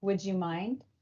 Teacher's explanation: a final D sound in a word and an initial Y sound in the following word fuse to a j sound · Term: coalescence